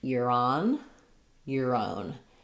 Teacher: So it's going to sound like you're on. So the R is going to jump and connect. You're on your own. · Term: link together